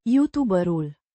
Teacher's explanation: with the emphasis on the second syllable of YouTuber